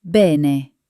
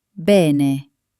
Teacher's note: Notice that both E sounds are exactly the same.